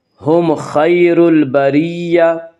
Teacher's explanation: میم کو ظاہر کر کے پڑھیں گے۔ ہم خیر البریہ، خیر خا کو پر پڑھیں گے، خا حروف مستعلیہ میں سے ہے، حروف مستعلیہ 7 ہیں جن کا مجموعہ خصہ ضغط قز ہے، یعنی خا، صاد، ضاد، غین، طا، قاف، ظا، یہ 7 حروف ہمیشہ ہر حال میں پر پڑے جاتے ہیں۔ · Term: اظہار شفوی